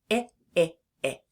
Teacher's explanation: when we say the i sound, we have our tongue in the middle of our mouth and we can feel our vocal cords buzzing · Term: short i sound